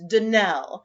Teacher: the correct pronunciation of our name is danelle accent on the last syllable